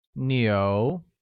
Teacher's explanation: where cow translates to 牛 and is pronounced with a mid-rising tone